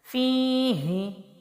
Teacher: فا کے نیچے زیر ہے تو یہ یا مد ہے، فی کو لمبا کریں گے